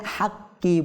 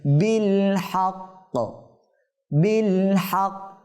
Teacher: এখন আমরা এটা হাক্কি পড়ছি, কিন্তু যদি আমরা এখানে স্বাভাবিকভাবে যেটা পড়তে হয় এটা যদি পড়ি, এখানে থামার কারণে কফে সাকিন হয়ে যাবে